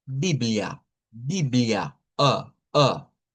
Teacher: la Biblia en portugués se lee y se escribe casi igual, solo que la A del final es una a centralizada